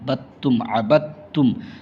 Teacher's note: اس با کو جو ہے تا میں ملانا ہے، اس دال کو نہیں پڑھیں گے، با کو با تا زبر بد، تا میم پیش تم، بدتم، عبدتم، اس دال کو نہیں پڑھیں گے۔